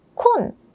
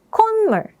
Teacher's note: However, because 콧물 is a compound word that is made by adding two different words together, as I mentioned, the 시옷 is not pronounced like a T, but rather like an N. So instead of 콧, it sounds more like 콘.